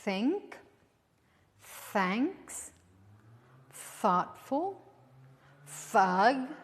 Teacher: you bite your tongue a little and then you hear a little hiss